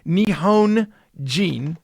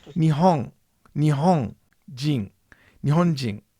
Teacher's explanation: So, for example, it's not Nihon Jin, it's Nihon Jin. The front of the tongue is never in the front of the mouth. It's the back of the tongue making the un sound.